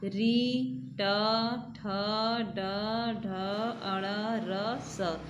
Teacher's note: इन वर्णों को हम लोग मूर्धा से बोलते हैं